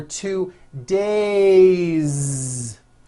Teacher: have one day or two days it's not days on voice it's days with a voiced Z ending